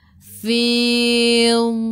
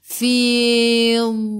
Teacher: Tepi lidah menyentuh gigi geraham atas. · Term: istitalah